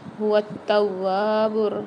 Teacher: تا کے اوپر اور واو کے اوپر دونوں پر مشدد آ رہی ہے، ان کو سختی اور جماؤ کے ساتھ پڑھیں گے، اور واو کو ایک الف مدار کھینچ کے بھی پڑھیں گے۔